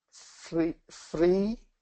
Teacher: the f is in the front of the mouth the r is in the back of the mouth so your mouth is trying to get from the front to